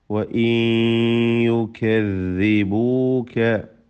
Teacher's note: ثم وإن يكذبوك അവിടെ വഇൻ എന്നതിലെ സക്കിന നൂനിനെ ഇദ്ഗാം ബിഗുന്ന ചെയ്ത് യായിലേക്ക് ലയിപ്പിച്ച് മണിക്കേണ്ടതാണ്.